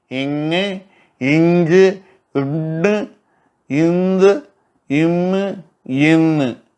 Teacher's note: இந்த ஆறும் மென்கணம். ஏன்னா மூக்கால ஒலிக்குது. வல்லினத்தை நோக்க வல்லொலியை நோக்க மெல்லொலியாக இருக்கிறது.